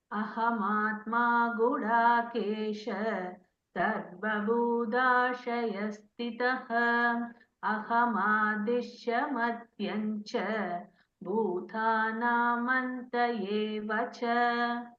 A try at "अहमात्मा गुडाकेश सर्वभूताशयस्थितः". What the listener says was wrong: First line you said Budha. It's Bhutha. First line you said Budha. Sarva Budha you told. You should be Sarva Bhutha Shayastita. Tha. First Tha.